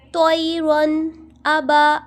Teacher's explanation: اب یہاں پہ دیکھیں رو کے اوپر ساکین ہے اور رو ساکین سے پہلے ہے زبر، یعنی ہم رو کو موٹا پڑھیں گے